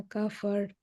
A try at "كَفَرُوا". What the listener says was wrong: কাফারু আসলে। কারণ ওয়াও হচ্ছে এখানে মাদ আকারে আছে। কাফারু। দম ছেড়ে দিলেও কাফারু হবে। কারণ যেহেতু মাদ আসলি দিয়ে যদি শেষ হয় তখন থামলেও আমি মাদ আসলিটা একটা টান দিতে হবে।